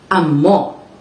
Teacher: this is a noun which is stressed on the second syllable